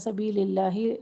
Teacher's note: سبیل اللہ لام اسم کو باریک پڑھیں گے